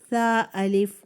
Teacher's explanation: ثا کو ادا کرتے ہوئے آپ کی زبان کی جو ٹپ ہے وہ فرنٹ کے 2 دانتوں کے ساتھ لگے گی، جن کو ہم بائٹنگ ٹیتھ کہتے ہیں، اور آپ کی وہیں رکھے زبان کی ٹپ کو آپ نے یہ حرف ادا کرنا ہے تاکہ اس میں ذرا سی بھی بز نہ آئے.